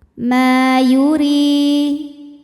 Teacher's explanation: Ma, di sini ada hukum tajwid namanya mad thabi'i dzahiri. Karena ada alif didahului fathah. Maka huruf mim panjang dua harakat